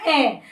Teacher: स्वर जो है थोड़ा सा नाक से बोला जाएगा बिल्कुल हल्का सा नाक से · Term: अनुनासिक